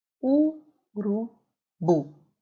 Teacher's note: A sílaba mais forte é a última, mas ela não possui acento. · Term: sílaba tônica